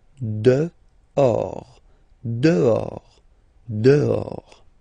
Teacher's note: this H in French doesn't exist phonetically, so you don't pronounce it